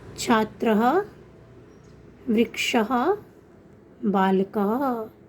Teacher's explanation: विसर्ग का उच्चारण कंठ से किया जाता है